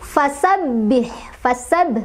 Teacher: ba-nya agak ditekan sedikit karena ada tasdidnya ya.